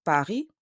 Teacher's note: In French, we don't pronounce the final S. We say Paris.